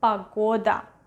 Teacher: in this case, the vowel O is stressed, so we are going to pronounce it as O